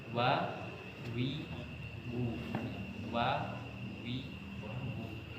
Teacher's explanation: yaitu huruf wau I huruf wau itu makhrajnya dengan membulatkan eh makhrajnya dari dua bibir yang dibulatkan